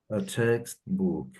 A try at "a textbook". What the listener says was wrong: Good.